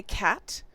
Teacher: It's just this very quiet t